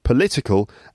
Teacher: And then the adjective political. The word stress is on the 2nd syllable